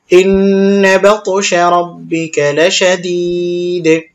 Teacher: ওয়াকফের সময় দাল সাকিন হবে দালে কলকলা করতে হবে